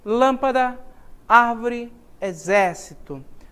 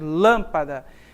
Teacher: a sílaba tônica está na antepenúltima sílaba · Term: proparoxítonas